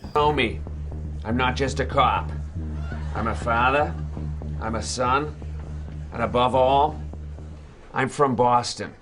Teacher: people often joke about the dropped R sounds and the unique pronunciations